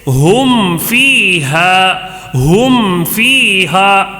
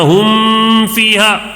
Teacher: میم کو ظاہر کر کے جلدی پڑھیں گے، غنہ نہیں کریں گے · میم کو اچھی طرح ظاہر کرنا ہے. ہم فیہا، غنہ نہیں کرنا. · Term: اظہار شفوی